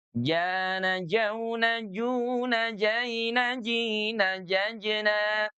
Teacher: huruf jim itu dari tengah lidah yang diangkat ke langit-langit.